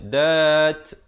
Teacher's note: Ma'dudat. Diwaqafkan dengan diberikan bunyi angin di hujungnya.